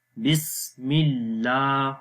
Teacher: اللہ کے نام سے پہلے زیر آ گئی تو اللہ کا نام باریک پڑھیں گے